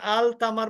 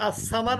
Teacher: আলিফ লামের পরে যদি শামসী অক্ষর আসে তাহলে লামটা উচ্চারিত হয় না